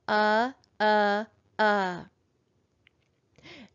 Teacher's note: we're going to code the vowel with a schwa because it's going to go uh uh